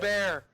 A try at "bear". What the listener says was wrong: See? You say ba. You said ba, not bear.